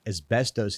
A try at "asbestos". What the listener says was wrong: Asbestos. No one pronounces the B. It's asbestos.